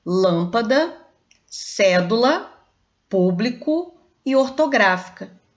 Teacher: Olha os exemplos que eu dei: lâmpada, cédula, público e ortográfica. Todas essas palavras são claros exemplos que a antepenúltima sílaba é a tônica e que por isso elas são acentuadas, porque elas se encaixam na regra das proparoxítonas.